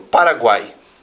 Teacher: vocálico que não se separa mas que vai possui três termos geralmente semivogal vogal e semivogal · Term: tritongo